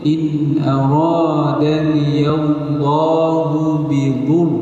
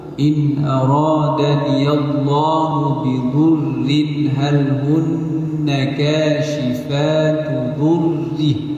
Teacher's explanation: Jadi ra pada perkataan bidhurrin kita baca nipis. Tarqiq dibaca nipis.